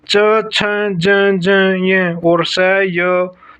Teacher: जिन व्यंजनों के उच्चारण में जीवा का अग्र भाग कठोर तालु को स्पर्श करता है, तालु व्यंजन कहलाते हैं।